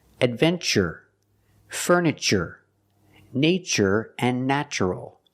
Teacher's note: We pronounce the TU with the ch sound, like chicken, when there's no stress after the T.